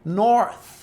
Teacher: Então, para produzir, imagina que você tem o primeiro som, nor, e um segundo som, que é o som do TH, o som do S com a língua presa